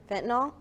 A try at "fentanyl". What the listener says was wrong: Yeah, it's fentanyl. not null, it's nil, fentanyl. fentanyl.